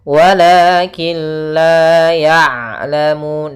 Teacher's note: daripada makhrajnya huruf ain, yaitu tengah tenggorokan kita · Dan ain usahakan jangan sampai masuk hidung